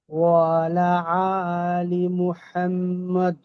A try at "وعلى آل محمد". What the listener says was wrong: একটা জিনিস খেয়াল করেন, যে ওয়ালা আলি বলছেন, এই যে এখানে ওয়ালা একটু টান হবে। ওয়ালা